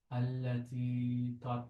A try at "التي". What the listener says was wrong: Not too long. Not normal length.